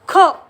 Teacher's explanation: याचा जेव्हा उच्चार करतो तेव्हा गळ्यातून ख असा उच्चार होतो आणि क आणि खंचा मिक्स साऊंड असणार आहे म्हणून इथे आपण